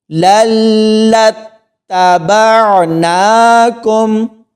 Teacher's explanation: لام کو لام کے ساتھ ملائیں گے تو جھٹکا دے کر اور تھوڑی دیر رک کر پڑھیں گے، اسی طرح لام کو آگے تا کے ساتھ ملائیں گے تو یہاں پر بھی جھٹکا دیا جائے گا اور تھوڑی دیر رکا جائے گا۔ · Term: شد